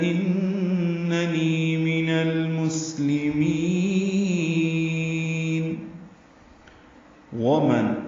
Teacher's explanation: من میں نون ساکن کے بعد حمزہ آنے کی وجہ سے اظہار ہو رہا ہے، نون کی آواز کو ظاہر کریں گے